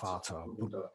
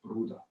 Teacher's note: So you don't really hear the R as pronounced, particularly the word Bruder, I suppose, stands out there, where you have the BR, the R sound is really there. And then at the end of the word, it almost disappears. So Bruder, brother, Bruder.